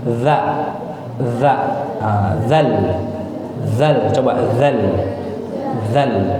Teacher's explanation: Nih, ujung lidah. Ujung lidah ketemu sama gigi seri yang atas. Nah, jadi dikeluarkan sedikit lidahnya. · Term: huruf dzal